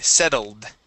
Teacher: with the ed ending, we need only that D